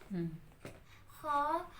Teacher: खा हलक के शुरू वाले हिस्से से अदा होता है।